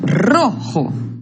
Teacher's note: La sílaba tónica es ro, una palabra grave también.